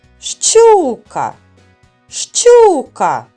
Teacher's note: Більше виділяється голосний звук у. Над ним і треба ставити наголос. Ставимо наголос над першим голосним звуком.